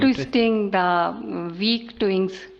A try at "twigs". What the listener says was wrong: ट्विंग्स नहीं फिर ट्विग्स.